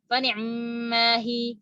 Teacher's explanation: dibacanya fani, ainnya diikhtilaskan